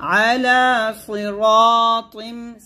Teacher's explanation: আইনের জায়গায় হামজা উচ্চারণ করবেন না আইনটা একটু চাপ দিয়ে আলা সিরাতিম সিরা বলবেন না সিরা এরকম আলা সিরাতিম মুস্তাকিম এরকম